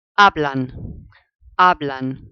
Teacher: So because it finishes with an N, it's the nose rule. Therefore, the emphasis must go on the second last vowel, which happens to be the first vowel of the word.